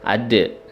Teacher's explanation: Ada dal sukun dibaca qalqalah sughra karena sukunnya asli dan adanya di posisinya di tengah kalimat ya. Ada. Jadi cukup ada, nggak usah terlalu besar pantulannya.